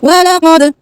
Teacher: दाल को आवाज़ हिलनी चाहिए, आवाज़ करके वापस आई, दाल साकिन होगा तो आवाज़ करके वापस आएगी